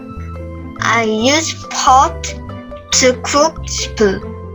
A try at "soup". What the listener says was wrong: Cook soup, not puss. Soup. Soup.